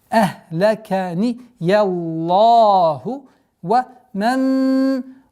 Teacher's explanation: полноценная ассимиляция с полноценной назализацией в размере двух огласовок